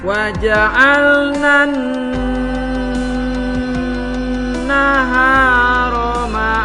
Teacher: Nun gunnah harus dibaca dengung